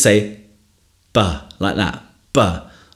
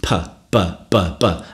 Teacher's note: And that's called a bilabial plosive. Bilabial means lips, two, bi means two, and labial means lips, so two lips plosive.